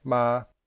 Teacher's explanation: the word ma begins with a low class consonant and ends with a long vowel there is no tone marker or ending consonant so this would be a high tone